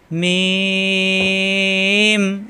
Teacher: মিলানো ঠোঁট ছেড়ে দিয়ে আবার মিলালি হয়ে যায়, মিম। এখানে কিন্তু টান দিয়ে পড়া যাবে যখনই আমরা হরকত লাগাবো।